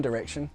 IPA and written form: dərɛkʃən (direction)